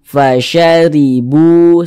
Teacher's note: huruf ro ni dia memiliki tanda baca kasrah atau harakat kasrah maka huruf ro dibaca tarkik Dibaca tipis sehingga pangkalisan kita itu tidak naik terangkat ke atas huruf rnya